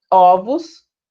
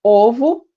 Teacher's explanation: a mudança da pronúncia, né, glote aberta ou fechada, quando a gente pronuncia uma palavra no singular ou no plural. Ovo, fechado, ovos, aberto. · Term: metafonia